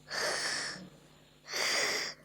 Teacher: When Russian speakers pronounce the H, they bring the back of the tongue high up, creating this tense sound.